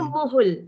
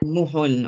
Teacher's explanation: Ada sifat pada huruf ha sukun. Hamas.